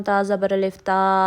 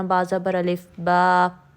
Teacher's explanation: الف مدہ کی آواز ساری باہر نکل جاتی ہے، جس کی وجہ سے الف مدہ باریک پڑا جاتا ہے